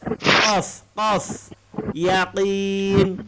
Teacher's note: Kalau qaf ini makhrajnya pangkal lisan, pangkal lidah naik ke atas.